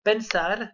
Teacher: L'accent tonique est sur le A de la terminaison, donc de AR.